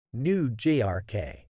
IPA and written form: nuː jɔːrk (New York)